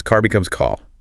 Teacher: in a lot of British English, Australian English, that R at the end of a syllable just vanishes